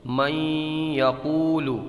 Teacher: اس میں غنہ ہوگا، غنے کی مقدار 1 الف کے برابر ہوتی ہے۔